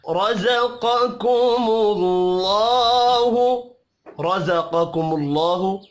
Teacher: را پر پڑھا جائے گا زبر کی وجہ سے قاف حروف مستعلیہ ہے پہلا والا قاف اس کو پر پڑھیں